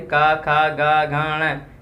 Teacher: उनका कंठ से उच्चारण होगा